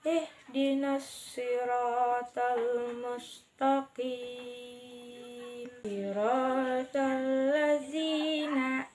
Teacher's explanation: huruf shad yang makhrajnya di ujung lidah bertemu dengan pangkal gigi seri bawah